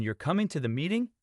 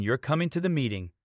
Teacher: a rising tone in your coming to the meeting indicates a question in contrast a falling tone in your coming to the meeting signals confirmation